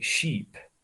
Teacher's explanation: there's a slight change in the rhythm in the cadence of my speech so you know it's a long one